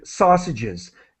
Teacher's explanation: The S is pronounced as an extra syllable.